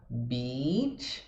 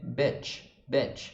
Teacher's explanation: Beach, longo, abrindo a boca lateralmente, e o betch, a boca só cai um pouquinho para baixo.